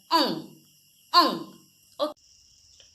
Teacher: और अंग का उच्चारण नाक से होता है। देखो मुंह से ज्यादा अंग का उच्चारण नाक से होता है। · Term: अनुस्वार